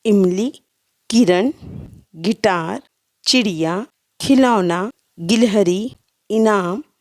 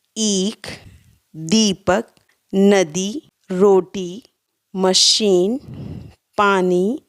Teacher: छोटी ई को बोलने में कम समय लगता है और बड़ी ई को बोलने में अधिक समय लगता है।